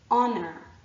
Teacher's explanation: Honor, our, ear, and honest all begin with an H, but the H is silent. And so what we're actually hearing at the start of these words is a vowel sound